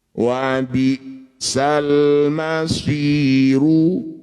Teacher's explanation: Madi bertemu huruf hidup kemudian dihentikan disebut bacaan namanya mad arid lukun. Cara bacanya si kita panjangkan enam harakat. Kemudian huruf yang terakhir kita sukun.